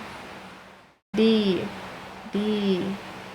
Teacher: My tongue does not touch my teeth when I say D.